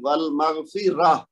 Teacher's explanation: اچھا اس میں کیا آپ دیکھ رہے ہیں کہ تائے تانیس کے اوپر علامت جو بھی ہے، چاہے وہ تنوین ہے، چاہے وہ زبر ہے، چاہے وہ زیر ہے، وقف کی صورت میں وہ کیا ہو رہا ہے کہ وہ ہا کی آواز آ رہی ہے ساکن کی، وہ یعنی علامت کے ساتھ کوئی اس میں تبدیلی نہیں آ رہی، بلکہ علامت جو بھی ہے وہ وقف کی صورت میں صرف ساکن ہو رہی ہے اور آواز چینج ہو رہی ہے ہا میں۔